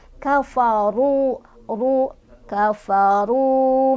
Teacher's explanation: Dan ro-nya juga dia dibaca secara tafkhim karena ro-nya barisnya di atas atau dhammah ya. Jadi dibacanya tebal.